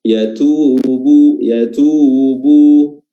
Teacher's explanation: huruf ta mengandung hams, ya, ada nafas yang keluar.